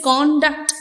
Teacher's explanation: If you give the stress on the initial part, you read it as conduct, which means your demeanor, your behavior, your character. And if you give the stress on the second part, it becomes a verb conduct, which means the act of passing, right?